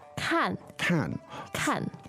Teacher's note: the verb to look is 看 看, fourth tone.